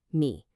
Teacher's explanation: The mistake here is breaking that dipping third tone into two separate sounds, like me yi. That's not right. It has to be one single fluid motion. Think of it like a little scoop, me.